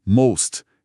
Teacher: E most, a maioria ou o mais, tem o som de o fechado, most.